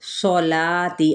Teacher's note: کھڑا زبر ہے، باریک ادا کریں گے، ایک الف کے برابر کھینچتے ہوئے